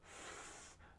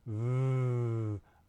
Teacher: If I say f and hold my fingers here by my voice box, I don't feel any vibration. But if I go v, I feel the vibration, and I can switch between them.